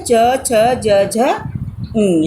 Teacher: ई च वर्ग, य और श का उच्चारण स्थान कहाँ से होता है? तालु से होता है।